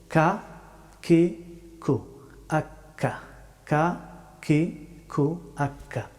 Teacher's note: কাফ হরফটি উচ্চারিত হয় জিহ্বার শেষের অংশ থেকে তবে একটু সামনের দিকে আগ বাড়িয়ে